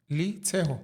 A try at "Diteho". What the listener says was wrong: But apparently you pronounce it Diteho, but you spell it with an L. Yeah, it's Diteho, yeah.